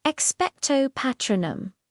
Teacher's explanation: Notice the long O and the R vowel. It's precise and formal. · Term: classic British pronunciation